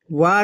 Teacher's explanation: व का उच्चारण स्थान दंतोष्ठ होता है।